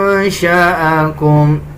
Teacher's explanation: نون پہ اخفا کیا جائے گا یعنی ناک سے آواز نکالی جائے گی